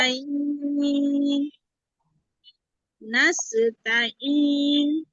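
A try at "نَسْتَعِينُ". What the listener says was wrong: নাস্তাইন কেন হবে আপু? এখানে এখানে মাঝে আর যে আসে নাই তো, আপনি কেন টান দিচ্ছেন? হ্যাঁ, তাহলে এক আলিফের মতো টান দেন, আবার বলেন ওটা।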